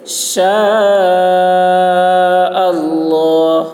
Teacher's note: شین کی آواز سخت ہوگی، مد کھینچیں گے. شاء اللہ، اللہ کا لام موٹا ہوگا.